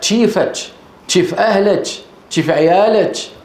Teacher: ومن العرب من ينطق بدل الكاف تشا، تشا يعني شين أولها تاء